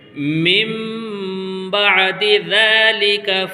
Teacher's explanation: ثُمَّ قَسَتْ قُلُوبُكُمْ مِن بَعْدِ ذَلِكَ، یہاں پر ایک چھوٹا سا نون کے اوپر میم بنا ہوا ہے، چھوٹا سا میم بنا ہوا ہے، تو یہاں پر جب ساکن آتا ہے نون ساکن تو نون ساکن سائلنٹ ہو جاتا ہے، اور اس میم کو اس چھوٹے سے میم میں ملا کر کے پڑھیں گے اس طریقے سے۔